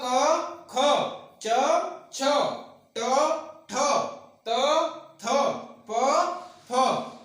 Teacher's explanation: स्वर तंत्री में कंपन नहीं होता है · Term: अघोष वर्ण